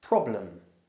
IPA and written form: 'prɒbləm (problem)